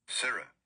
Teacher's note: the important thing is that you put the emphasis on the first syllable